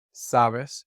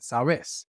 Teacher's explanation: the emphasis in vos always falls on the last syllable. So instead of sabes, we get sabes.